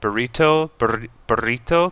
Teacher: because it's a double R, so you trill it